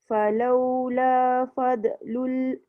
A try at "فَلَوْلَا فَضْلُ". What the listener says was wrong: Dot jaga jangan fadl. Falaula fadlullah. kalau dah tu jangan sikit sangat.